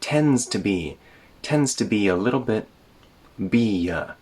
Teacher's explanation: There's no d sound in tends.